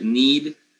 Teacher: when you say something like needed, then this ed ending will be with schwa